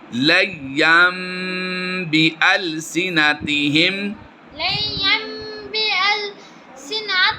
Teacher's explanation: ین کی تنوین کے بعد حرف با آیا ہے، اس لیے تنوین کی نون کو ہم نے ین کی نون جو اینڈ میں آتی ہے اس کو میم سے بدل کر ہم نے کیا کرنا ہے، اقلاب کرنا ہے، یہ میم کی آواز آئے گی